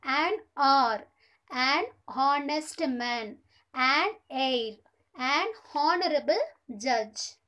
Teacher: it will be noticed that the some words are begin with a vowel sound as the initial consonant H is not pronounced